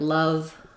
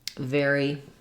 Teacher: had our F sound that was our voiceless uh labial Dental we have our V sound that's our voiced labial Dental